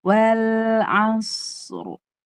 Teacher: Sod itu kan rokhowah kan dulu, baru masuk ke ro tawasud, tebal. Sodnya tebal dan rokhowah.